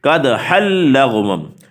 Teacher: یہاں ادغام ہوگا لیکن بغیر غننے کے